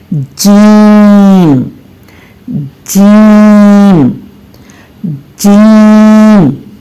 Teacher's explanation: जबान के दरमियानी हिस्से को, यानी कि जबान का जो दरमियानी हिस्सा है और उसके ऊपर जो तालू का हिस्सा है, वहां पर मजबूती से मिला दें और फिर मुंह को खोलते हुए आवाज को बाहर निकालें।